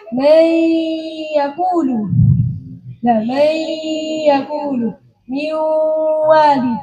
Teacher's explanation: Ya ini, artinya yang masuk ke dalam huruf yang kedua ini tidak secara total. Hanya makhrajnya nun saja yang masuk pada ya dan waw. Tapi sifatnya masih tetap, yaitu sifat gunnahnya. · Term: idgham nakis